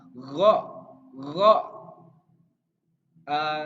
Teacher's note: ini hampir ke tenggorokan, tapi nggak kho gitu, nggak kayak huruf kho, tapi ini lebih ke hampir mau ke tenggorokan. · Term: huruf ghain